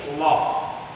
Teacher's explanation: lafzul jalalah tafkhim adalah lafaz Allah yang mesti dibaca tebal